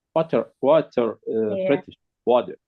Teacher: of button button we do also do the whole water like making the T into a D sound instead of water right um water water water yeah right so